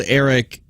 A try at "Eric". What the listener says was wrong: You're saying it wrong. Eric. It's a little bit longer. The I.